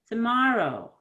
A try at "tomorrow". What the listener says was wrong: Your lips don't move that much. I'm looking at your lips. You need more. Oh, move those lips. Tomorrow.